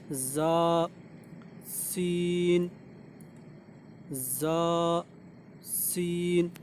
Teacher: ज़बान जो है ऊपर और नीचे वाले दांतों के बीच में होती है और दांत मिलने वाले होते हैं। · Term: ज़ा और सीन